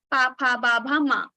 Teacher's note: So when these are produced from your lips, both the lips will touch each other and pa, pha, ba, bha, ma we will produce. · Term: pa varga